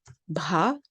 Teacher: So an aspirated B, bha.